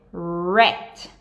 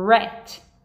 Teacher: eu tô fazendo biquinho e, lógico, não dá pra vocês verem, mas a minha língua está enrolando atrás. Então, ela tá fazendo rat, ok?